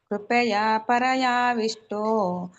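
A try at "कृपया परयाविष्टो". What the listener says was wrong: ಇದು ಕೃಪಾಯ ಅಂತ ಇದೆಯಲ್ಲ, ಅದು ಕೃಪಾಯ ಅಂತ ಹೇಳ್ಬೇಡಿ, ಕೃಪಯ ಅಂತ ಹೇಳಿ. ಅಲ್ಲಿ ಇದಿದೆ ಕೃಪಯಾ ಪರಯಾವಿಷ್ಟು ಅಂತ ಹೇಳಿ. ಕೃಪಾಯ ಅಲ್ಲ, ಅದು ಕೃಪಯ ಆಗ್ಬೇಕು ನೋಡಿ.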